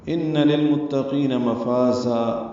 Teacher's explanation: ان میں نون مشدد پہ غنہ ہے